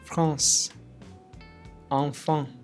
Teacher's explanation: Mouth open, relaxed, air partially through the nose. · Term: nasal AN sound